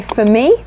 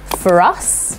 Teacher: So if a word ends and is spelt ending with an R, and the next word begins with a vowel sound, then we will include that R. So if I say for me, no R sound, but for us, I do include the R sound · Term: linking R